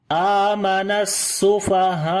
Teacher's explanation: آخر میں آرام سے ہم نے پڑھا تو حمزہ کی آواز جو ہے وہ سکپ ہو گئی ہے